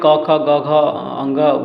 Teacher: क वर्ग का उच्चारण स्थान कंठ है। यह कंठ से आता है। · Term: कंठ वर्ण